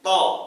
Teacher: Bunyi o ini muncul dari pangkal lidah yang terangkat ke atas. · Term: huruf to